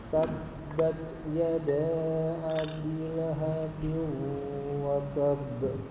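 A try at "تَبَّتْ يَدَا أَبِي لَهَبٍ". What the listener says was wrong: oke yadanya Pak panjangkan Yada gitu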